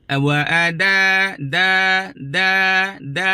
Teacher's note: Bil ma'rufi wa ada'un ilaihi bi ihsan. Wa ada'un, da hujung lidah dengan gusi tempat tumbuh gigi, tapi sebahagian daripada depan lidah akan sentuh gigi.